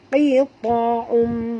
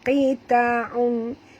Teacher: tanwin baris 2 depan bertemu dengan mim wajib dengung idgham ya, ma'al gunah